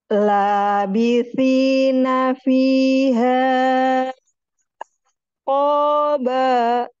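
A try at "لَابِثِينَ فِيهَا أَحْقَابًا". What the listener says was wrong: Iya, baik.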